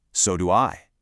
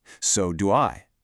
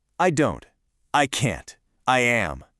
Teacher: we actually put the heavy stress on the auxiliary verb itself · When you let your intonation fall gently on that stressed helper verb, it projects this wonderful, natural confidence.